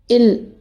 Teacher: காற்று நாக்கோட இரு பக்கமாக தடை இல்லாமல் வெளியேறும். இது மருங்கொலி.